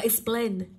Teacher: với từ explain, trọng âm sẽ rơi vào plain âm tiết thứ hai của từ